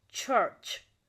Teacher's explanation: For example, church, where the air is first blocked and then released with the friction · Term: Affricates